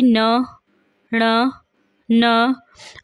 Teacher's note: तो जैसा कि आप जानते हैं जो वर्णमाला के अंतिम पंचम अक्षर हैं, जैसे कि न, ण, न, अगर आप इन्हें बोल के देखें तो आपको समझ आएगा कि इसमें से जो है हवा नाक से भी निकलती है, यानी कि इन्हें अनुनासिक बोला जाता है